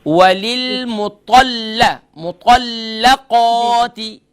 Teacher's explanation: क़ा को लाम से मिलाएंगी, लाम को क़ाफ से नहीं मिलाएंगी